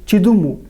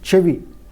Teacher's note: Telugu has changed an initial ka to cha before palatal vowels.